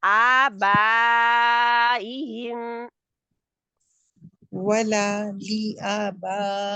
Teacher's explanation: وينذر الذين قالوا اتخذ الله ولدا ما لهم به من علم ولا لآبائهم آبائہم، آبا جہاں پہ مد متصل واجب ہے، جو آج ہم کر رہے ہیں نا ان کو، کہ دیکھ رہے ہیں مد متصل واجب ہے جہاں پہ کرنا ہی کرنا ہے لمبا، آپ نے 4 سے 5 کاؤنٹ تک اس کو کھینچنا ہے. 5 بہتر ہے اگر آپ کھینچیں گے تو.